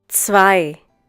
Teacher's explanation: The German consonant Z is pronounced like the English TS sound that is found at the end of words such as mats, pots, bits.